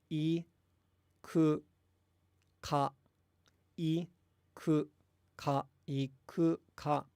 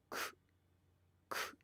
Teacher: But the important thing, so you're devoicing the u. You're saying the u, but you're not engaging your vocal cords as you say it.